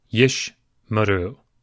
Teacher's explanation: in our example with two Shevas in a row, the first one is silent, the second one is vocal. Yish maru. So if it's the first of two Shevas, it will be silent.